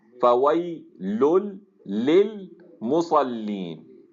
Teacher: یہ جو لام آپس میں ملا رہے ہیں تو اس کے اندر تفخیم نہ آئے۔ فوئی لل لل مصلین، صاد کے اندر تفخیم آنی چاہیے اور وہ آپ کے لام کے اندر مل رہا ہے یہ تجدید کی وجہ سے۔